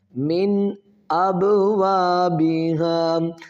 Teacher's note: جائے گا۔ اظہار کا مطلب ہے ظاہر کرنا ہے، ٹھیک ہے، یہاں پر غنہ نہیں کرنا بلکہ اس کو ظاہر کر کے پڑھنا ہے